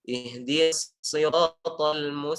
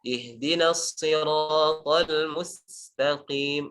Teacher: Ingat sin tipis, jangan dibiarkan tebal. Mustaqim, ini tebal.